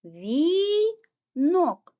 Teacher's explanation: куди падає наголос на звук о Він знаходиться в другому складі тому другий склад є наголошеним